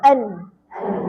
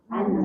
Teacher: huruf nun ni bila kita sebut automatik akan keluarlah satu sifat yang kita panggil dengung